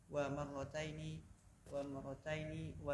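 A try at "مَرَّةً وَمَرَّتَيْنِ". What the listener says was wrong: tidak ada wawunya yang kedua.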